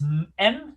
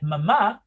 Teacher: other bilabial that is known for instance m like mama here the airflow does not pass from your mouth but is actually liberated from your nose